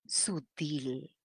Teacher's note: la mayor fuerza de voz está en la última sílaba es una aguda